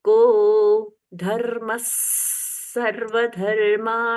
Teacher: स में तो ऐसे पढ़ना है जैसे डबल स पढ़ रहे हो को धर्मस सर्व धर्म धर्मस म के साथ में स जोड़ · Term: विसर्ग का परिवर्तन